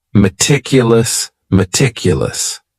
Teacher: very conscientious of her health the next word is meticulous and this word has four syllables and the stress is on that second syllable meticulous meticulous that first syllable also has that schah that a